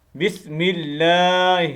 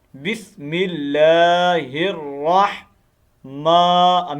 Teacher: میں سے جو ہا ہے نا وہ بریک ہا۔ بسم اللہ یہ موٹا ہا ہے، اس کو موٹا کرنا ہے، سینے سے نکلنے والا، اور یہ بریک ہا ہے